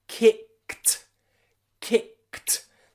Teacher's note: If we take the verb kick and we put it in the past tense, you'll notice it finishes ed, kicked. But you probably heard it doesn't have the d sound. It has a t sound.